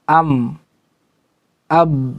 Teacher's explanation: Jadi kalau huruf mim dan ba itu mulut tertutup rapat. Am, ab, keduanya nempel.